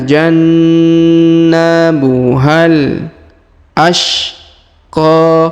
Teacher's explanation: Ini huruf H ya di ujung langsung kita sambung ke huruf alif lam qamariyah